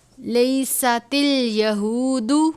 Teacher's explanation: سین ہے، حروف صفیریہ میں سے، ادا کرتے وقت آواز سیٹی کی طرح نکلنی چاہیے